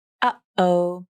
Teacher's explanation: It's the part when the vocal cords come together and the air and sound are completely stopped. The tongue does not participate in the stop T. It's only the vocal cords. If you're making it correctly, you should not be able to breathe at the same time because the vocal cords are closed completely. · The unreleased T can be pronounced another way, using just the vocal cords, not the tongue. This type of T sound is sometimes called a stop T, glottal T, or glottal stop.